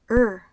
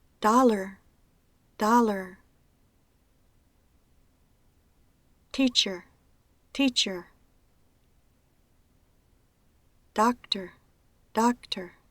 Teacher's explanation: Cuando las combinaciones AR, ER o OR aparecen en los diccionarios, con la pronunciación schwa-R, se pronuncia En este caso, no se debe intentar pronunciar la schwa como la U corta. Trata de pronunciar la consonante seguida por la R, como si no existiera la vocal entre medio. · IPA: ər